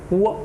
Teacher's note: व का आप उच्चारण करेंगे व, तो आप महसूस करेंगे कहीं ना कहीं आपको उ की ध्वनि सुनाई दे रही है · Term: अर्धस्वर